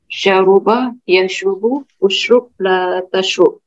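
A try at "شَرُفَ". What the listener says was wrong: Mohon maaf, bukan ba tapi fa.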